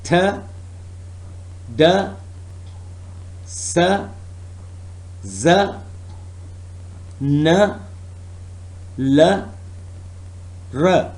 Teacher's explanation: The next is alveolar. The articulators are alveolar ridge and tip and blade of tongue.